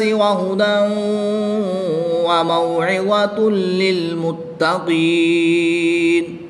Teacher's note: نون کی زبر کو وقف کی حالت میں ساکن کر کے پڑھیں گے، اور یہاں پر وقف کی حالت میں مد عارض ہوگی، 2 سے 3 الف تک کھینچ کر پڑھیں گے